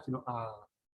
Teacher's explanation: el sonido tiende a fricativizarse, a debilitarse de alguna manera